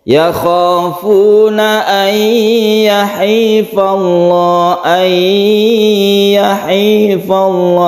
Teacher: Nun mati bertemu dengan ya idgham biguna, kita panjangkan.